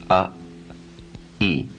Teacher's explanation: Feel how your mouth is moving from a slightly more open to a more closed position. A, e. You can feel it in your lips.